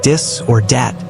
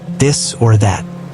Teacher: some languages don't have the TH sound. French or German speakers might say dis or dat instead of this or that.